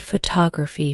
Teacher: take the word photography for example the stress is on the second syllable